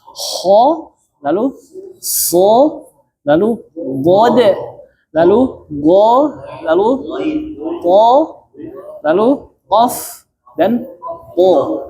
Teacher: cara pelafasan 7 huruf ini harus dengan mengangkat pangkal lidah kita ke langit-langit. Nah, yang perlu diperhatikan adalah berarti semua ketebalan huruf-huruf ini bukan di bibir. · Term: huruf isti'la